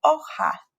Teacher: The letter J is going to be pronounced like the letter H in the English word hat, but it's even going to be more strongly and in the back of the throat.